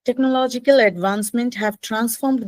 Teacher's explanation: when you read advancements you actually drop the s on the end